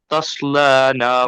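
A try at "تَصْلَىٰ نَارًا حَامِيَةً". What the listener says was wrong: تس لا، لام کو موٹا نہیں پڑھیں گے، لام باریک۔ تس لا، تس لا،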